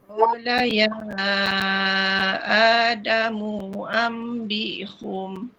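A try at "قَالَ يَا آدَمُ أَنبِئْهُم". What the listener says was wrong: Yang ni pula ni salah. Mu ni mu mu pendek je. Damu. Tak boleh damu tak boleh.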